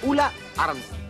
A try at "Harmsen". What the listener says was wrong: No, no. Ulla Armsen mit H am Anfang. Ja, wie von der Eide mit A am Anfang.